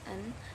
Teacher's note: it is produced by pressing the tongue tip against the alveolar ridge the soft palate is down so the air escapes through the nose